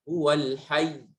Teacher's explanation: Itu nabr, menekan ya-nya karena ada syaddahnya.